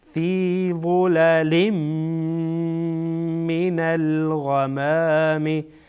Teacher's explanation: بعد از تنوین میم آمده میم از حروف ادغام یرملون ادغام میکنیم